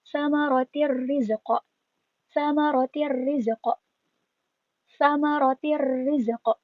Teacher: Jadi R-nya tuh ada dua ya, seakan-akan ada tasydid